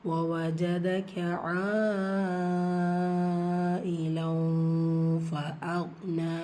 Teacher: மத்துல் முத்தசில் நீங்கள் 5 ஹரக்கத்தளவு நீட்டம் கொடுத்து ஓதணும் · இந்த இடத்துல இஃபா பண்ணுங்கள், நூனை பாதியாக மறைச்சி, தன்வீனில் இருக்கிற நூனை பாதியாக மறைச்சி குன்னா செஞ்சு ஓதணும்